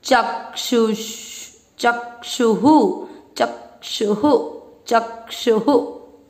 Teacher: ऊ की मात्रा है तो विसर्ग को पढ़ेंगे हु , चक्षुहु चक्षुहु चक्षुहु। तीसरा चरण वापस, दिव्यम ददामि ते चक्षुः,